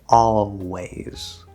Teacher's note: we don't say always we say always with a half l so we can move very easily from that all and then just do the w don't have to bring your tongue up